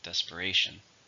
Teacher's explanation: How many syllables are in desperation? 4 syllables, stresses on the third.